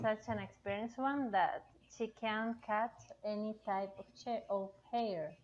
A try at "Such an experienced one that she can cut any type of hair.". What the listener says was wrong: Of hair. Good.